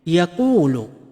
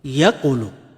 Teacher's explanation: si harf waw ay pinatagal nito ang tunog ng dhamma na nasa kanyang unahan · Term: long vowel